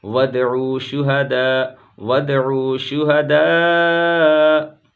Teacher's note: شہداء مد متصل 2 سے 4 الف کے درمیان کھینچ کر کے پڑھیں گے · وَادْعُوا دال پر قلقلہ کریں گے